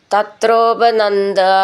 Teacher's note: ഭി എന്നുള്ള അക്ഷരം നന്നായിട്ട് ഊന്നി പറയണം